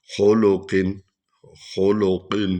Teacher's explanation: قاف کو پر پڑھیں گے